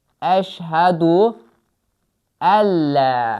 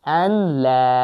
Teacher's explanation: Yəni idğam qaydası var deyə birbaşa ləmə keçəcək.